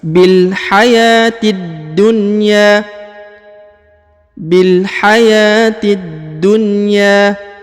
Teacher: huruf ti langsung ke huruf da ya, langsung masuk dan ditahan serta ditekan